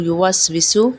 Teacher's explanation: یوس وسو میں سین سیٹی والا ہے۔